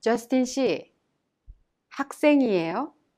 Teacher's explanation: The 이에요 in Justin 씨는 학생이에요 is an ending used when asking questions. When you say 이에요, you must raise the tone at the end of the sentence to make it sound like a question.